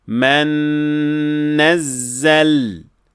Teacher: we fully assimilate the nun and we elongate the ghunnah, specifically the ghunnah of the mim here and the nun there. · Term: full idgham with ghunnah